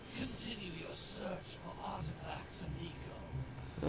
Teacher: His voice is very like breathy and like sounds like he's having a hard time breathing.